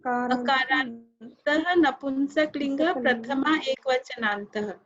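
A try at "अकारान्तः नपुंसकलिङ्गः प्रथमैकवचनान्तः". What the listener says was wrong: So all the akarantah napunsakalingaha, that visarga you should say. Akarantah napunsakalingaha prathama ekvachanantah. You should say the visarga.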